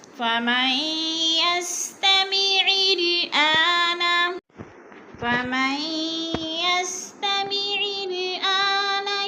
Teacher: फमई पे इदगाम हो रहा है, नून साकिन के बाद या मुशद्दद है तो नून साकिन को नहीं पढ़ेंगे, मीम को या के साथ मिलाकर इदगाम करेंगे